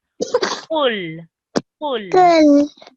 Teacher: the qaf letter comes from right at the bottom of your throat. And you say with a rounded mouth, qul. Qul. · this qaf here is one of the thick letters. So it's said with a rounded mouth.